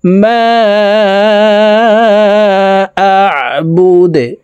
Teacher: দাল কলকলার হরফ নিচের দিকে ধাবিত করে ধাক্কা দিয়ে সাকিন করতে হবে